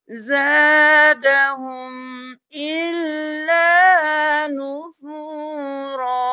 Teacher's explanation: یہاں پر ہم جب وقف کریں گے تو ہم نون کو بالکل چھوڑ دیں گے